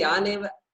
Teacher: It appears like we are not pausing between Yan and Eva. Okay? And we are not pausing because there is a Sandhi.